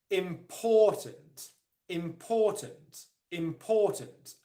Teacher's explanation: the primary stress the main stress in the word is on the second syllable